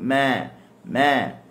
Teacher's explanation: Huruf mim ni huruf yang dia keluar daripada syafatain. Syafatain ni bibir, syafah, bibir.